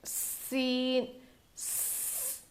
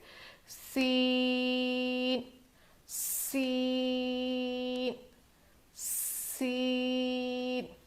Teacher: सीन में सीटी जैसी आवाज़ होती है, इसको सफ़ीर कहते हैं।